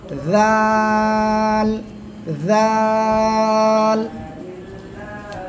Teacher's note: জিহ্বার আগা সামনের উপরে দুই দাঁতের আগার লাগান লাগে উচ্চারণ করতে হবে